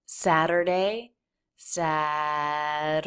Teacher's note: So we switch from the flap right into the schwa R, unstressed syllable of Saturday. So the front of the tongue will flap against the roof of the mouth and then pull right back a little bit to the R. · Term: flap T